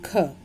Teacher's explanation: ख का उच्चारण स्थान होता है कंठ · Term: कंठ्य